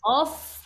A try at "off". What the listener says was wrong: 아니고 off. 하니까 그 F 발음이 강해야 되겠죠.